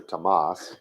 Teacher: It was never supposed to be pronounced with a TH sound. It was not supposed to be Thomas.